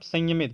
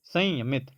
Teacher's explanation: जब हम लोग ये अंस्वार का इस्तेमाल करते हैं ना तब सिर्फ नाक से आवाज निकलता है